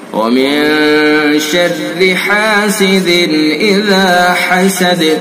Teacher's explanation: ذال کو نرمی کے ساتھ اور یہ دال کے اندر قلقلہ کریں گے